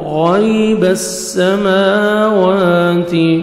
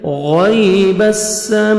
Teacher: غین کو موٹا کر کے پڑھیں گے، یا لین ہے، نرمی سے ادا کریں گے